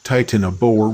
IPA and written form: ˌtaɪtənəˈboʊə (Titanoboa)